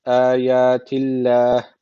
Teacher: Allah lafzı ince okunuyor. Çünkü öncesindeki harfin harekesi altta. Yani Allah lafzının alttan giriş yapılıyorsa Allah lafzı ince okunuyordu. · Dururken de meddi arız tecviti var. Bir elif uzatarak duruyoruz.